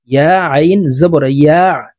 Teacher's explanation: আইন হরফকে হলকের মধ্যখান থেকে চাপ দিয়ে উচ্চারণ করব।